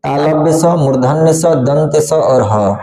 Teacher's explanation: अगला उष्म व्यंजन, उष्म माने होता है गर्म हवा, जिसे उष्म व्यंजन मतलब गर्म, उष्म मतलब गर्म होता है। तो जिस व्यंजन को बोलते समय गर्म हवा बाहर निकलता है इसलिए इसको हम लोग उष्म व्यंजन कहते हैं